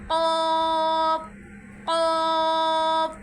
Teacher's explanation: زبان کی جڑ اور تعلق کے نرم حصے سے ادا ہو رہا ہے. قوف قوف یعنی کوے کی آواز کی طرح ہم نے قوف پڑھنا ہے.